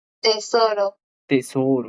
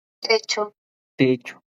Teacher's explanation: lo que ha hecho es esa lengua la ha acercado a los incisos superiores, a los incisivos superiores por atrás para pronunciar la T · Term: dental